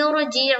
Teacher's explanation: تو اس را کو ہم پر پڑھیں گے، جی جیم کے نیچے زیر کی حرکت ہے، زیر کو جلدی پڑھیں، تھوڑا بھی نہ کھینچے، معروف پڑھیں، مجہول آواز سے بچے